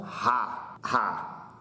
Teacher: as cordas vocais vibrando aqui na garganta e você faz mais força · Você faz mais força, você sopra com mais força para dizer o Rá. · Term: segundo som